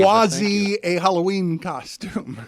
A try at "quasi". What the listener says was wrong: No, quasi with an S sound, not a Z.